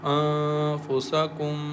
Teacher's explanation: we hide the sound of clear nun sakin and recite with light nasal sound